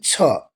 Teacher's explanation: छ जो महाप्राण अघोष वर्ण है